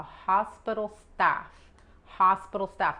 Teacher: la O H se pronuncia como la J, pero suave, y la O es como A